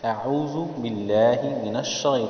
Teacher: تو کو موٹا کیا ہے تاکہ تا اور تو میں تمیز ہو